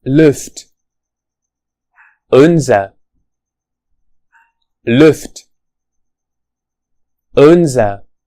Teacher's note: Perhaps in German this vowel sound is pronounced with the mouth more closed and the tongue closer to the back of the mouth. This sound is represented by the letter U.